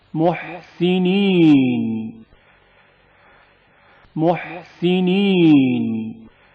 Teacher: ہا کی آواز حلق کے درمیانی حصے سے گھٹی گھٹی سنائی دیتی ہے